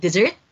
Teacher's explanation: Meron siyang stress dun sa dessert second syllable